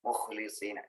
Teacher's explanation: Bukan bukan pakai hak, tapi pakai kho-nya. Dia lebih ngorok huruf kho itu.